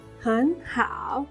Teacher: hén sounds like a second tone